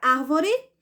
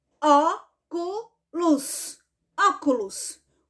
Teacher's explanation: a palavra árvore tem três sílabas portanto ela é trissílaba e ela é uma palavra proparoxítona por quê Porque a sílaba tônica dela é a antepenúltima sílaba